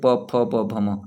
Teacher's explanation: आप प बोलिए, बिना ओठ के टच किए नहीं बोल पाएंगे, तो ये आपके ओठ से आते हैं